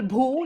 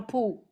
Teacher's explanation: the aspirated voiced bha has also got mapped to a p.